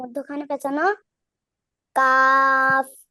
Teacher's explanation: 5 নম্বর জিহ্বার গোড়া জিহ্বার গোড়া থেকে একটু আগে বাড়িয়ে তার বরাবর উপরের তালুর সঙ্গে লাগাইয়া মধ্যখানে পেঁচানো কাফ